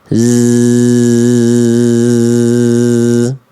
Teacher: zai itu ketika dilafalkan dia berdesis dengan karakter mengalir suara tanpa nafas. Makanya karakternya enggak ada bocor bunyi angin.